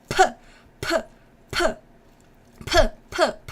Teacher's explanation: You can see how it's being aspirated. The air is coming outside from my body.